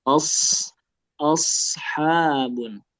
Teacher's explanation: shad itu ujung lidah bertemu gigi seri bawah ya.